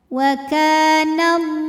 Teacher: Lam pada lafaz Allah atau lam jalalah dibunyikan secara tafkhim sebab huruf sebelumnya berbaris fathah, maka dibacanya tebal.